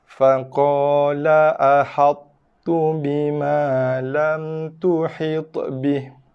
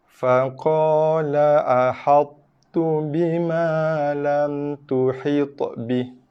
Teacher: Sebelah kaki masuk pada to, sebelah kaki masuk pada ta. Matikan dengan to tanpa sifat to, kemudian lepaskan dengan baris hidup ta. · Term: idgham naqis